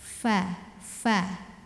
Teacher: tempat keluarnya huruf Fa adalah dari ujung dua gigi seri atas bertemu dengan bibir bawah bagian basahnya atau bagian dalamnya